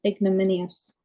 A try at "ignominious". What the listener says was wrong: Oh, G is not silent. Ignominious.